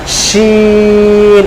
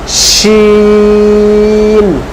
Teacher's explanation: জিহ্বার মধ্যখান উপরের তালু সেম জায়গা, আমরা জিম যেখান থেকে উচ্চারণ করেছি শিনটাও ঠিক সেখান থেকে উচ্চারণ হবে, জিহ্বার মধ্যখান উপরের তালু শিন, বুঝতে পারলাম?